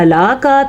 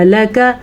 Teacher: ہلک عنی سلطانیہ، ہلک، ہا کے تلفظ کا دھیان رکھنا ہے. لام اور کاف کو لمبا نہیں کرنا. اگر آپ پڑھتے ہیں ہلاکا تو آپ غلط پڑھ رہے ہیں، اگر آپ پڑھتے ہیں ہلاکا تو آپ پھر بھی غلط پڑھ رہے ہیں.